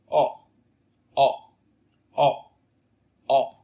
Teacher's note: Âm O ngắn ấy thì nó cũng giống là há như âm Ơ. Thì cái âm O này ấy, thì cái môi của chúng ta nó tròn hơn môi của âm Ơ.